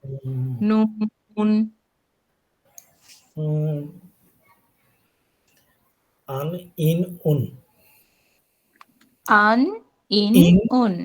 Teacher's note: জিহ্বার আগা দিয়ে আমরা এই তালুটাকে চাপ দিব আর শব্দ অনুভব করব নাসিকার মধ্যে।